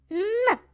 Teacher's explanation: з вами познайомимося з артикуляцією звукани губи приймають положення наступного звуку кінчик язика піднятий і упирається у верхній різці у верхні зубки спробуйте підняти кінчик язика за верхні зубки при вимові звука н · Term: звук н